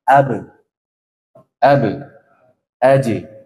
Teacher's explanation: tertahan dan dia tidak mengeluarkan udara ya suaranya lempeng suaranya itu tidak ada mengeluarkan nafas atau udara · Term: jahr